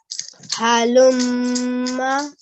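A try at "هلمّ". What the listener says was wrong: Very nice, mashallah.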